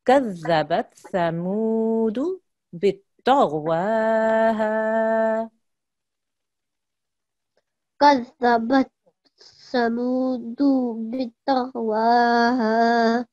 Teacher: We end up elongating both of them. So we really all need to be very conscious that mu is 2 seconds, but du is 1 second.